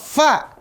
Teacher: ujung gigi seri atas bertemu bibir bawah bagian dalam